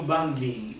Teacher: Ma quando diciamo bambini, un po' di M c'è, se andiamo a vedere, anche se è prevalente la fonetica dell'N. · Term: semi-N